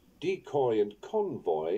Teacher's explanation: there is a little more stress on their first syllables